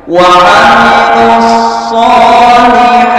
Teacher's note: Wa amilus sholihati, juga disebut mad tabi'i, panjangnya 2 harakat.